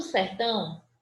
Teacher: Então, tirando o sertão, que é uma palavra oxítona, sertão é onde eu me prolongo mais, é na última sílaba, portanto, é a última sílaba tônica